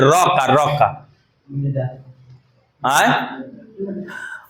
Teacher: र का उच्चारण स्थान मुर्धा